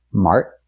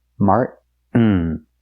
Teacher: We can take the T and make it a stop T. Mart. Stop the air.